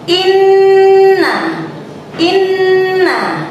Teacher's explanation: nun bertasdid itu harus kita dengungkan atau kita tahan sampai 2 harokat ya